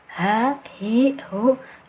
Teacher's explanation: H ini dia mempunyai sifat hamas, ada anginnya,